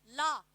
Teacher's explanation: ल को बोलते समय जीभ के दोनों भाग से हवा निकलती है बाहर की ओर। इसीलिए इसको पार्श्विक व्यंजन बोला जाता है।